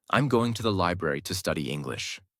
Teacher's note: Stress falls on library and English.